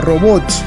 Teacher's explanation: robots es aguda acento en la última sílaba